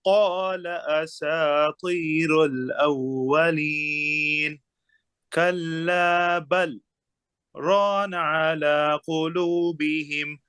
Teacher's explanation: কফটা আরো ডিপ, কফটা আরো ডিপে, একদম ডিপ, ডিপিস অফ দ্য টাং, আপার যে সফট প্যালেট ওখানে